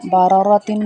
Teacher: باراراتن میں دو را ہیں، ان دونوں را کو موٹا پڑا جائے گا